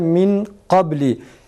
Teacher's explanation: ihfa yaparken genizden çıkaracağımız sesi kalın bir ses tonuyla çıkarmamız gerekir